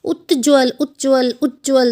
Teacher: त जो है ज के साथ संधि करता है तो आधा ज और पूरा ज की आवाज़ आती है। जैसे उज्ज्वल उज्ज्वल उज्ज्वल, तो आवाज़ आएगी उज्ज्वल की।